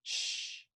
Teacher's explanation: And those are actually alveopalatal or palatal, where you are making the fricative actually not against your alveolar ridge, but a little farther back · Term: sh sound